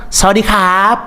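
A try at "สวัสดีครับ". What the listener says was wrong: Ah, mas tuh masih agak pitching dikit.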